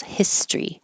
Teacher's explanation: history can be shortened so instead of History just two syllables